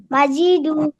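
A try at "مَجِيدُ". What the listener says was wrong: আপনার বানান ঠিক আছে কিন্তু উচ্চারণে একটু টান হয়ে যাচ্ছে, এরকম মা, মাজিদু, সবাই শুনেন, শুধু বলেন মাজিদু। মাজি বলা যাবে না, জি টান দেওয়া যাবে না, মাজিদু। মা এবং দু এখানে যতটুকু টান দিছেন জিমেও ঠিক অতটুকুই হবে, মাজিদু।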